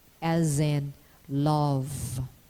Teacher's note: Raise the soft palate. Release the breath stream over the sides of the tongue, making a voiced lateral continuant. There is incomplete obstruction and a gradual release of the air. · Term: lateral sound